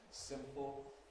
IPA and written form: ˈsɪmpl̩ (simple)